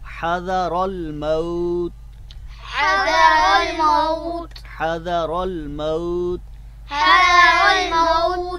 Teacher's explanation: را کے اوپر زبر ہے لہذا اس کو پر کر کے پڑھیں گے